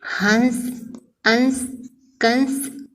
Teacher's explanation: अनुस्वार का उच्चारण नाक से किया जाता है।